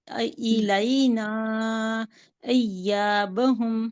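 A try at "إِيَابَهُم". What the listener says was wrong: ای نہیں ہے حمزہ کے نیچے کا زیر ہے ایابہم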